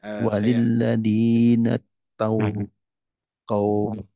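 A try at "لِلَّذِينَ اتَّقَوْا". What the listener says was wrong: Walilladzina taqaw. Nah, ini wawunya dihilangkan ya.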